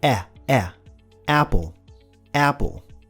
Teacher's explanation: O primeiro som da palavra apple não existe no português. Ele está entre o A e o E.